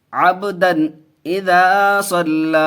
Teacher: عبدن قلقلہ ہوگا، با حروف قلقلہ میں سے ہے، اس کے اوپر جزم ہے